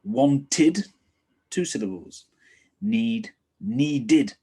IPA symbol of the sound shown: ɪd